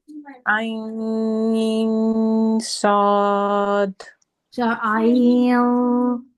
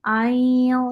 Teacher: नाक में आवाज जाएगी लेकिन जबान ऊपर नहीं जाएगी